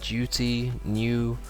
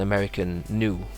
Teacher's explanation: So, British tune, American tune, and British duty, American duty or duty, maybe they will say like this, and British new, so you have a y sound